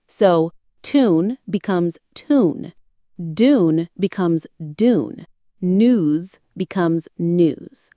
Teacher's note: In most American accents, the y sound is dropped entirely after alveolar consonants like t, d, n, s, z.